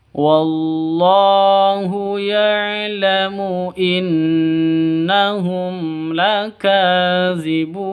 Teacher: gunnah musyaddadah, jadi dengung 2 ketukan